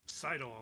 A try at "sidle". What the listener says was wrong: So it's sidle, not siddle.